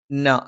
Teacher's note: നാവിന്റെ അറ്റം മേലെ മുൻബല്ലിന്റെ മോണയിലാണ്